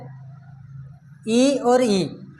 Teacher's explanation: ये हमारे दोनों स्वर जो बोले जाते हैं वो हमारे बोले जाते हैं कंठ से, फिर उसके बाद में आता है ई और ई, इनको हम बोलते हैं तालु से